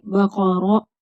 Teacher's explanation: قاف حرف مستعلیہ پر پڑھی جائے گی، را کے اوپر زبر ہے، پر پڑھیں گے